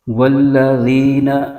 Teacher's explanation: زبان کا سرا اوپر کے دانتوں کے اندرونی کنارے سے ادا کرنا ہے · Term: ذال کی آواز